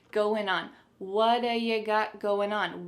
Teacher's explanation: we're gonna drop that G at the end of the word going